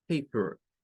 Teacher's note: No es per, no es paper, porque si usted lo lee como está leyéndolo muy con el sonido del español. Y esta E suena a un schwa.